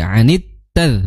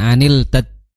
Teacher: ta makhrajnya adalah di ujung lidah bertemu dengan pangkal gigi seri atas